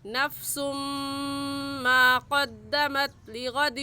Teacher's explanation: میم دیکھنے میں ایک ہے اور پڑھنے میں 2 مرتبہ پڑھا جا رہا ہے، 1 مرتبہ خود اور 1 مرتبہ پیچھے والے لفظ کے ساتھ ملا کر. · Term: ادغام